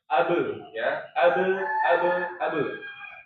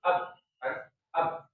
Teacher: dalam kondisi sukun atau sakinah ya dia harus mantul karena dia termasuk huruf-huruf qalqalah ya